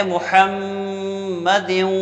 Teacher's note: ادغام کے ساتھ غنہ بھی کرنا ہے، ناک میں آواز بھی لے جانی ہے۔